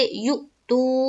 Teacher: واو مدہ کا قاعدہ ہو رہا ہے، تو ہم کہیں گے واو ساکن سے پہلے پیش ہے، واو مدہ ہوگا، واو مدہ کو ایک الف کے برابر کھینچ کر پڑھیں گے